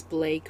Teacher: the L Sound is used to replace the r sound in my speech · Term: substitution